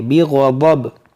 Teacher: عربی میں زواد لفظ نہیں ہے، عربی میں ضاد پڑھیں گے